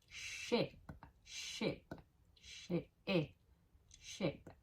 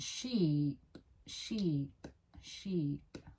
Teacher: It's a short e and a long e. The difference in length changes the sound and the shape of your mouth when you pronounce them.